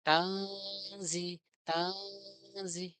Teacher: Ada suara samar ketika kita membaca nun sukun bertemu za-nya. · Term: ikhfa